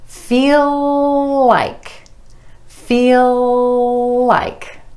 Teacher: keep that L going from the end of feel into like